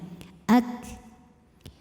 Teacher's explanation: Tapi dipermudah dengan adanya sifat lain yaitu sifat dari segi udara, keluar udaranya ak. Untuk kafnya yang sukun, udaranya keluar setelah suaranya